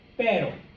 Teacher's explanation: Basically what's happening here is that your tongue is going up, the tip is touching the top of your mouth, and then it is sitting back down. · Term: single R